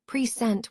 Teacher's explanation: As a verb present with stress on the second syllable, it means to show or display.